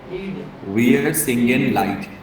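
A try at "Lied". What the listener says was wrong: लाइट, वाई लाइट? लाइट क्यों है? लीड है ना वो। आई कब बनता है? आई कब बनता है? ई आई होगा जब लीड, और उसको बड़ा ई, ठीक है, लीड, है ना।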